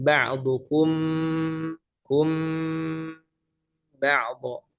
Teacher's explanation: Sama halnya juga dengan ikhfa syafawi. Ba'dukum ba'dha itu kan suaranya full ke hidung